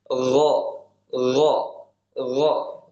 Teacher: naik ke tenggorokan bagian atas ya bagian yang paling dekat dengan rongga mulut yaitu darinya keluar huruf gain dan ko ya.